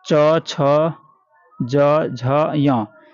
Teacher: च हलंत छ हलंत ज हलंत झ हलंत य हलंत को तालू का स्पर्श होता है तालू तालू जो होता है ना जीभ के जस्ट ऊपर वाला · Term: च वर्ग